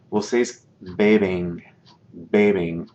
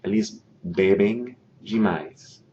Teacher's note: that M on the end of that form, that conjugated form, indicates that I nasalize the E.